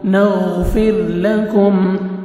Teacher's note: را جزم سے پہلے، را ساکن سے پہلے زیر ہے، را کو اپنے باریک کرنا ہے، کاف کو باریک پڑھیں گے اور میم ساکن کا اظہار ہے، جلدی پڑھیں گے